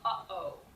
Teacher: you have literally stopped the air in your throat by cutting it off at the windpipe extension and made it to your mouth. · The glottal stop, which is a great sound. This is the sound in the middle of uh-oh.